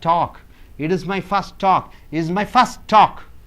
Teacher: this word ends with the T sound, starts with the T sound, so only T, one T sound is enough.